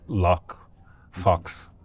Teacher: it's short, but it's also this unrounded vowel